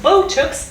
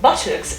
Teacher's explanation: Botox is transcribed with a O diphthong and this pot sound at the end, whilst buttocks is transcribed with a short O, right, and a schwa at the end